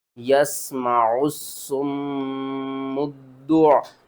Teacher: یہاں پر دیکھیں دال سے پہلے الف ہے اور لام ہے، ان دونوں کو آپ نے چھوڑ دینا ہے۔ قرآن پاک میں میم مشدد جب بھی آ جائے تو اس کو ہم غنّے کے ساتھ پڑھتے ہیں، یہاں پر آپ نے غنّہ کرنا ہے۔